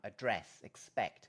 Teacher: in the word expect notice that there is no aspiration in this word